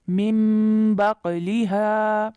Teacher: نون کے بعد با آ رہا ہے، اس لیے من کے بجائے مم، من بقلیہا. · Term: اقلاب